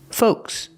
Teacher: The L is silent. Do not pronounce the L.